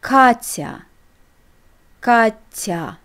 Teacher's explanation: ya follows a consonant and makes it soft, t, and ya is pronounced without y. Katya. The first case is when we use these letters in the beginning of the word or when they follow another vowel.